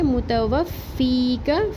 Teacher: متوفی کا، میم کے اوپر سنگل حرکت ہے، تا کے اوپر بھی صرف زبر ہے، واو کی زبر کو فا تشدید سے ملا کے پڑھیں گے۔ متوفی کا، فی یا مدہ ایک الف برابر پڑھیں گے اور کاف کا زبر کھینچیں گے نہیں